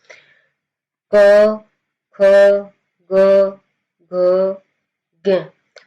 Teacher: जो यह आपका क वर्ग है ना इसका उच्चारण होगा आपका कंठ से। · आप की जो वायु है वहां से कंठ से निकलेगी।